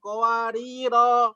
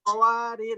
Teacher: Kalau wakof panjang qawariro, kalau wasal pendek.